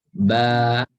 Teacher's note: Ba fathah kita baca panjang nyambung dengan alif sukun kan? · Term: huruf mat